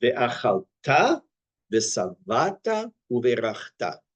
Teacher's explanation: The accent is on the last syllable in the first and third word, and then the first syllable in the middle word.